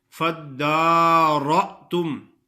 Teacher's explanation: فَدَّارَأْتُمْ، دال مشدد ہے، را موٹا پڑا جاتا ہے. حمزہ ساکن ہوتا ہے تو وہ جھٹکے سے ادا ہوتا ہے